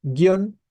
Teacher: guion es un monosílabo por la cuestión de la presencia del diptongo